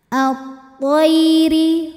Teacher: Alif Lam takrif lagi yang dinamakan dengan alif lam syamsiah sebab alif lam menghadapi huruf Syamsiah yaitu huruf tho maka alif lam tidak dibaca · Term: Idgham Syamsi